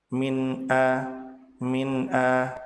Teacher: Nun sukun pada kata min dibaca jelas karena setelah nun sukun ada hamzah, dan hamzah termasuk salah satu huruf dari huruf yang keluar dari tenggorokan.